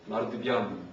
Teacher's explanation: 앞에 있는 마르 뜨의 뜨가 동화돼가지고 마르 드 그러니까 유성음으로 바뀐다는 얘기예요. 원래 뜨는 무성음이에요.